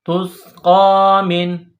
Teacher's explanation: میم کے نیچے زیر ہے، اس کے بعد نون ہے، نون کے اوپر جزم کا نشان ہے، تو میم کو نون کے ساتھ ملائیں گے